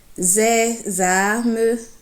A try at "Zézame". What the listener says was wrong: Maintenant, zézame. Alors, tout à l'heure, tu disais que tu faisais zé avec le ton bas. Zézame.